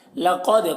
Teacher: قاف کو پر پڑھیں گے اور دال میں قلقلہ ہوگا